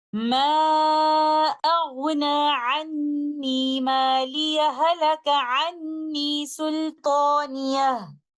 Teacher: First of them is, if we choose to continue our recitation from ayah number 28 to 29, then we merge letter ha of the word maliya into letter ha of the word halaka. And this is called idgham mutamathilan, and we will recite it like this.